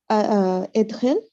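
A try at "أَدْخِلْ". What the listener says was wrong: Not idkhil. Adkhil. A fatha on the alif. Adkhil. Yeah, this is a four-letter verb. This is the reason why.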